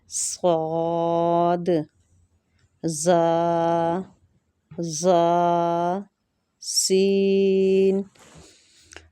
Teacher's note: زبان کی نوک جب ثنایا سلفا یعنی سامنے والے نیچے کے 2 دانتوں کی نوک سے لگے تو یہاں سے صاد، زا، سین ادا ہوتے ہیں